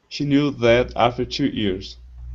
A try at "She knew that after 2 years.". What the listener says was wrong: Okay, good.